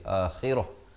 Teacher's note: Dzalika bi annahu mustahabbul hayatad dunya 'alal akhirah waqaf di sini, maka ta marbutah ini ditukarkan kepada bunyi ha dan diberikan tanda mati mendatang.